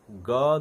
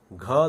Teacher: ग ध्वनि में जितनी हवा खर्च होती है, घ ध्वनि में उससे ज्यादा हवा खर्च होती है